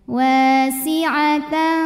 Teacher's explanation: Karena ada tanwin fathah menghadapi huruf fa, maka tanwinnya dibaca samar-samar siap-siap menuju makhraj huruf fa disertai dengung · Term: ikhfa awsat